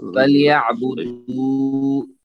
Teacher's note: واو مد ہے، اس کو وامدہ کے ساتھ لمبا کریں گے، 2 حرکت کے برابر